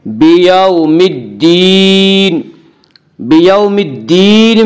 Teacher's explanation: وہ واو جو ساکن ہو، اس سے پہلے زبر ہو، واولین کو نرم آواز کے ساتھ پڑھیں گے۔ بیوم الدین، بیوم الدین میں مد عارض وقفی ہوگا۔